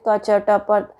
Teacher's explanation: अल्पप्राण मतलब जिनका उच्चारण करने के लिए कम वायु की आवश्यकता पड़ती है, जैसे क च ट प, हम बस बोलते चले जाएंगे, तो ये अल्पप्राण है।